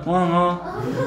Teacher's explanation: ओठ दाबल्याशिवाय म म्हणता येणार नाही